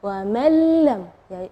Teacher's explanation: Nah, di situ kita bacanya wa man lam ya, jadi huruf nunnya tidak ada, atau kita dibilang idgham ke huruf berikutnya dan gunnahnya tidak ada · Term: idgham bila gunnah